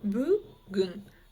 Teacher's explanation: Бүгін произносится коротко и нечто среднее между буквами «ы» и «и».